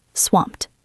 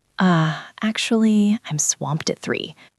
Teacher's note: Do not say swamped ed. It is 1 syllable. Swamped. The E is silent.